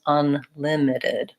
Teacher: And you can hear when I say it, I'm exaggerating a little bit, that I'm really lengthening where the stressed vowel is